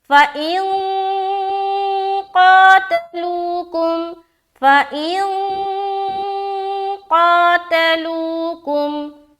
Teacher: قا کو کھینچ رہے ایک الف